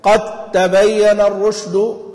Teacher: قد الدال ما عادت موجودة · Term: الإدغام الصغير